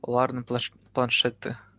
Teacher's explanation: Потому что Т оказывается вместо, то есть планшет Е и И, да, планшеты. Но Т, когда между двумя гласами, оно звончается